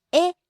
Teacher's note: starts high, falls on the second syllable